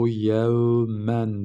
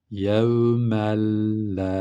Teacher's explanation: Bu lamın üzerine elif de uzatıyor. Bir de gunnetsiz katıyoruz.